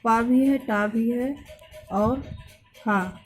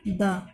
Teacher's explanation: पा भी है, टा भी है और हा, सब अघोष व्यंजन है और द घोष व्यंजन है